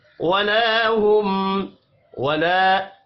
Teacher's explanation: ولا ہم، ولا الف مدہ ہے، ایک الف کے برابر کھینچ کر پڑھیں گے۔ میم ساکن کے بعد یا ہے، اظہار شفوی ہوگا، غنہ نہیں ہوگا۔